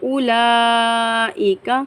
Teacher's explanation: اولئک، لام پر بڑی مد ہے، بڑی مد کو 5 الف کی مقدار کھینچ کر پڑھیں گے۔ اگر حمزہ اسی ورڈ میں آئے، یعنی کہ اسی الفاظ میں آئے تو بڑی مد پڑھیں گے، اور اگر حمزہ سیکنڈ ورڈ کے اندر آئے تو چھوٹی مد آتی ہے، جیسے اولئک، یہاں پر اسی ورڈ کے اندر حمزہ آئی ہے تو اس لیے اس پر بڑی مد آئے گی۔